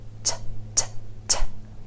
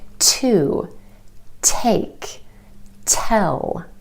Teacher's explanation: It's distinct. It's made by taking your tongue tip and tapping it on the ridge behind your top front teeth. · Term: true T